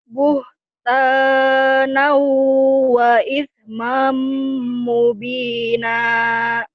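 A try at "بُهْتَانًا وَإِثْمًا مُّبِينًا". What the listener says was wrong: ismamnya jangan ditahan, dilepas. Kan idgham nyamber ya. Buhtanau buhtanau wa ismam mubina.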